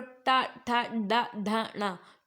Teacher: तो आपकी जो टंग है वो टच जरूर कर रही है आपके तालू को, लेकिन वो मुड़ जा रही है, तो इसका मतलब क्या है कि वो मूर्धन्य है।